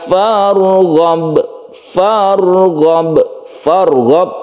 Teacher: rnya ditebalkan Karena dia itu sebelumnya fathah